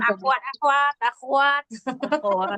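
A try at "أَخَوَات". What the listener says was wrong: Sebenarnya bukan akhwat ya, tapi koknya ini fathah, bukan disukun ya. Iya, difathahkan koknya. Akhwat ya, pakai fathah.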